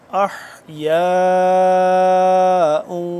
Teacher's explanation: 4 سے 5 الف کے برابر اس کو لمبا کریں گے